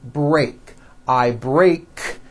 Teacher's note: break ends with an unvoiced k sound CK there's no voicing on that K so when you put